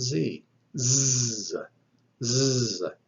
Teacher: The zeta also is dental, and it is voiced. It is a sibilant, sounds like the English Z. So make the sound of Z, z, z, and you should feel a definite vibration in your throat.